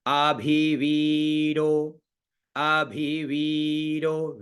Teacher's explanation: अ का स्वर नीचे भी का ऊपर वी का बीच में